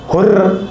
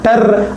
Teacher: रा के उच्चारण के समय जो हमारी जीभ है वो थर्राती ज्यादा है। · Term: प्रकंपित